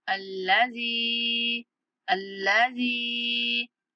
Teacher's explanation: जाल को 3 सेकंड तक खींचना है